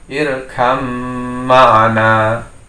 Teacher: Harusnya terbaca irkab ma'ana, tapi itu salah dalam pembacaan hukum idgham mutajanisain. Karena menjadi hukum idgham maka ba masuk dalam mim sehingga bacanya irkam ma'ana. Atau bisa dikatakan huruf ba di sini menjadi tasdid pada mim.